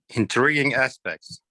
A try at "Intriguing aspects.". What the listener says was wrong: You don't have to pop the T so hard. Intriguing aspects.